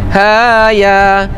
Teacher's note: ha 2 harakat, ya 2 harakat, tu namanya mad asli harfi, mad asli harfi, 2 harakat 2 harakat.